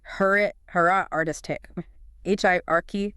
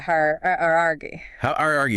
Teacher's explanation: So with hierarchy, you need that little sound in there. Don't smooth over that second vowel.